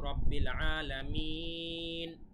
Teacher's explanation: যেহেতু আমরা থামলাম, তাই এক আলিফ টান না হয়ে এখন 3 আলিফ টান হবে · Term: মাদ্দে আরজি